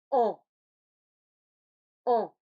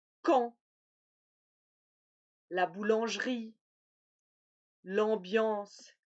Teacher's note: je vais former un A dans ma bouche et faire passer le son par le nez. Donc, bouche ouverte, lèvres arrondies, comme pour le A, la langue un peu en arrière, comme pour le A, mais l'air passe par le nez. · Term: le en